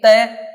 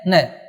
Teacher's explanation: तय बोलेंगे जीभ दांत के स्पर्श करेगी, लेकिन न बोलेंगे तो जीभ दांत के स्पर्श नहीं करेगी, वो स्पर्श करेगी किसके, मसूड़े के